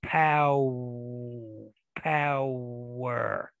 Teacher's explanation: another w in there it's pow power it it that that that w glides into the syllabic r